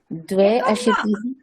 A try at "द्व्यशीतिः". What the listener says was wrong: न न न द्वे न उच्चारणं सम्यक् करोतु। द्व्याशीतिः